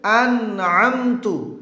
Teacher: তা হরফটি হলো হামসের হরফ অবশ্যই পড়ার সময় বাতাস বের করে পড়বেন এবং নরম করে পড়বেন